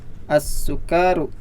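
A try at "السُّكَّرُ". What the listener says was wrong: Iya, kafnya pendek ya dan bertasdid. As-sukaru.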